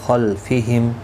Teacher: نون ساکن کے بعد حروف حلقی میں سے خا آیا ہے، اظہار حلقی ہوگا، یہاں پر گنہ نہیں ہوگا. خا مستعلیہ ہے، پور پڑھا جائے گا